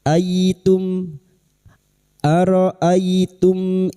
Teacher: mim sukun bertemu hamzah idhar syafawi, mim sukun dibaca jelas tanpa mendengung